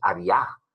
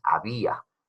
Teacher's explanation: En había tenemos una vocal cerrada que suena más que una vocal abierta, la A. Tú no dices había, tú dices había. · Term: hiato